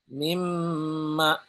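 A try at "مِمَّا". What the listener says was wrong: panjang Pak.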